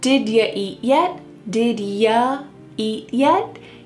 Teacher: Here, the word you is being reduced to yah.